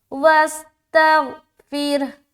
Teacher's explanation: फसब्बिह बिहम्दी, बिहम्दी रब्बिका, र बा ज़बर रब, बा ज़ेर बी, काफ ज़बर का, रब्बिका, र को मोटा रखेंगे, रब्बिका, फसब्बिह बिहम्दि रब्बिका वस्तगफिर, और यहाँ पर फिर इस रा को हम बारीक रखेंगे क्योंकि रा साकीना से पहले ज़ेर है